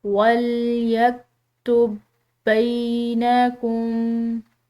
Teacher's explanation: تو اس پر بھی ایسا ہی ہے کہ جہاں یہاں دونوں با ہیں لیکن ان دونوں با کو آپس میں ملا کر جو ہے ایک ہی با کی طرح ہم اس کو ادا کریں گے، یعنی کہ ایسا پڑھتے ہوئے اس کو روانی میں پڑھتے ہوئے ایسا ہو کہ جیسے ایک با لکھی ہوئی ہے.